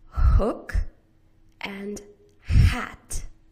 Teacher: You constrict the space in the back of your throat by pushing the back of your tongue up just a little bit. And then you push air out. Your voice box is turned off.